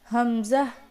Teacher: हमजा अक्सा हलक से